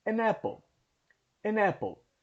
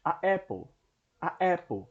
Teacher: Percebe que há uma batida na língua, né?